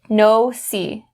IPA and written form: ˈnəʊ-si (nosy)